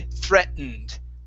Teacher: Now, the other way to pronounce this, because we have a T, okay, a T that's followed by a vowel and an N, okay, we can swallow that T and say threatened